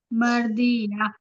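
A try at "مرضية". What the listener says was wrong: مرضیہ ضاد ہے. مردی نہیں دال کیوں نکال رہے ہم. ضاد ہے نا.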